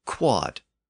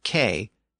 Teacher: Over time, within Latin, the W sound in the word fell away, and eventually the D sound at the end also fell away.